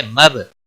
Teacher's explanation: با ساکن پر قلقلہ ہوگا